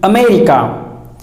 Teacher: It is not America, it is America. There is stress on the sound may.